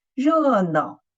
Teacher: we should make an emphasis of the first syllable. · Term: word stress